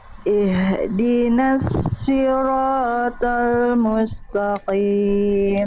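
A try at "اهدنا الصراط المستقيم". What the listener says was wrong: Oke, huruf shad Bunda. Jangan si tapi jangan si. Jangan dimonyongkan tapi si. Angkat pangkal lidah. Ihdinas si.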